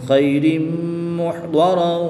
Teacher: تنوین کے بعد میم حروف عملون میں سے ہے تو یہاں پر ادغام مع الغنہ ہوگا، یعنی غنہ کر کے پڑھیں گے